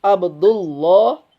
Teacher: Ketika dalam lafaz jalallah ya, atau dalam kalimat Allah yang sebelumnya berharokat fathah dan domah ya. Fathah dan domah, maka lamnya menjadi tebal. Ya. Abdullah ya jadi tebal. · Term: tafhim